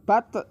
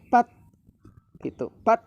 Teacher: Ujung lidah menempel terkunci di gusi atas · Di sini tak sukun, maka nanti di saat kita membacanya harus menahan, jangan sampai dipantulkan